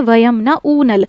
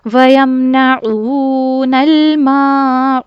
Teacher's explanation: इसमें हम आइन को हमजा से बदल देते हैं। जो गलती हमारी लह जली कहलाती है।